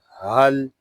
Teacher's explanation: یہ ہا حلق کے نیچے والے حصے سے ادا ہوگا